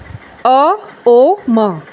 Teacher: मैं आपको साउंड करके बताती हूं कैसे। अ ओ म अ और ओ को थोड़ा सा शॉर्ट रखना है। म की हमने वाइब्रेशन लेनी है मुंह बंद करके।